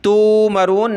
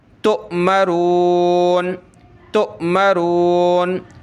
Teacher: حمزہ ساکنہ ہو تو اس کو پڑھتے وقت جھٹکا دیا جاتا ہے ، تو یہاں ہم پڑھیں گے تؤمرون، تا حمزہ پیش تو،